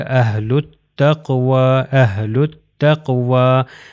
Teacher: یہ لام جو ہے وہ تا سے مل جائے گا